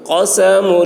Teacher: اس قاف کی آواز موٹی ہوگی.